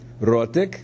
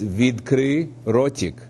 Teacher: notice the T is softened as well as it is in Russian